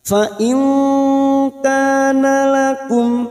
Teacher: Fa'il nun sukun bertemu kaf ikfa hakiki. Kita samarkan bunyi nun sukun dan mendengung selama 3 atau 2 harokat. Fa'il kana lakum, ka fathah diikuti alif 2 harokat.